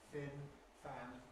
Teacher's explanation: the labiodental, lower lip, upper teeth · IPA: [f]